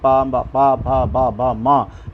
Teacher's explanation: वर्ग हैं हमारे वर्ण हैं इनके सब होंठों का स्पर्श होगा दोनों होंठ आपस में मिलेंगे बंद होंगे और बाद में खुल जाएंगे